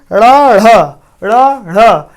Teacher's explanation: जब ढ़ बोलते हैं तो हमारी जीभ ऊपर जाती है, झटके से नीचे आती है। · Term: उत्क्षिप्त व्यंजन